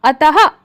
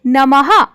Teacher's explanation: और जो मात्रा होती है, यह जो अ के पीछे दो बिंदियां हैं, ये दो बिंदियां ही विसर्ग की मात्रा हैं। और जब भी हम विसर्ग की मात्रा को उच्चारित करेंगे तो हम ह की ध्वनि, छोटे से ह की ध्वनि उच्चारित करेंगे।